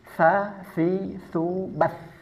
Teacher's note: Dari segi nafas dia bersifat hames. Ada nafas yang keluar. Nafasnya biasa tidak seperti ta yang hanya sekedar percikan saja.